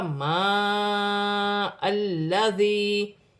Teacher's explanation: حمزہ کو لام کے ساتھ ملا کر پڑھا جائے گا۔ ما الذی، لام مشدد ہے، اپنے سے پہلے حرف کی حرکت کے ساتھ ملا کر پڑھا جائے گا، اور اپنی حرکت کے ساتھ ملا کر پڑھا جائے گا۔